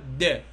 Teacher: tip of the tongue touch the alveolar ridge، تلامس الالفيولار ريدج.